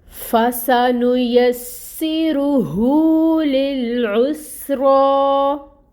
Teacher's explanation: سین میں سفیر ہے، سفیر کو واضح کریں یعنی سٹی